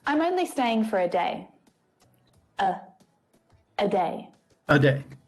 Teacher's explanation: since most of the time these articles are unstressed the vowel sound reduces to become the schwa sound